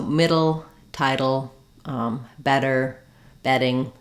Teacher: In title, we have the burst of air for the first T of title. The second T, title, is a flap and it sounds more like a D.